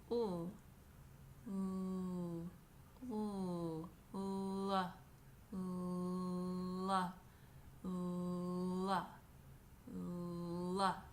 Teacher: this voiced consonant is created by bringing the tip of your tongue back behind your top front teeth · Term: L sound